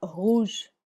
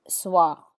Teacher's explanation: the difference between the strong R like rouge and a slightly weak or dry R in soir